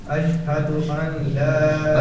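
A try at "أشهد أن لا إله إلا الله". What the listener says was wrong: اشهد ان لا اني نون کی آواز یہاں نہیں آئے گی.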